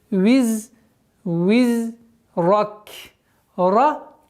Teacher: Здесь ра твердая, каф при остановке, огласовка аннулируется и переходит в сукун.